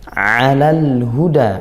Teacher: ainnya sempurnakan dari makhraj tengah tenggorokan, wasatul halq tengah tenggorokan. Alalhu, alhu izhar qamariyah, lam sukun dibaca jelas ya lamnya karena lam ta'rifnya bertemu huruf ha yaitu huruf qamariyah.